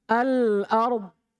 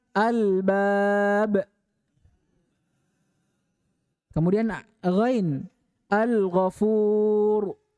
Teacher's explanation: lam yang jelas pada Al ini itu dinamakan dengan lamul qamariah